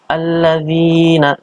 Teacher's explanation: huruf dzal kasroh bertemu dengan ya, ini dibaca panjang 2 harokat atau dibaca mad tabi'i